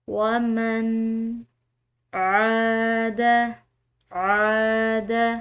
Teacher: عین کو کھینچ کر ادا کیا ہے الف مدہ کی وجہ سے